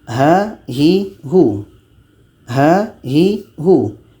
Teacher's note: Letaknya pada pangkal tenggorokan.